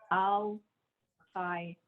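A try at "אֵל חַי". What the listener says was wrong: Not an al. What's the vowel under the aleph? El Chai.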